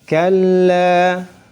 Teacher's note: lam bertasydid ditahan 1 harakat.